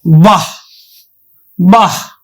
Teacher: বিসর্গ আছে আমরা উচ্চারণ করি কিন্তু অর্ধহ এর মত